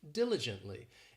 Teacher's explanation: This adverb has 4 syllables and the stress is on that first syllable